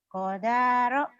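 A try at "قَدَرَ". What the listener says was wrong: Kodaro nggak ada yang panjang ya.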